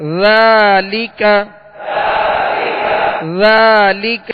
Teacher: ذال کو نرمی کے ساتھ ادا کرنا ہے، اس میں بالکل سیٹی کی آواز پیدا نہ ہو